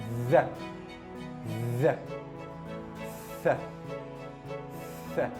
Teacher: بنطلع لساننا، اول طرف لساننا ما بين سننا، وبنبتدي نعمل الصوت ده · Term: التي اتش